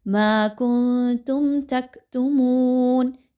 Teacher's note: میم ساکن کے بعد تا کا حرف آ گیا، اظہار شفوی، کسی طرح کا غنہ نہیں ہوگا۔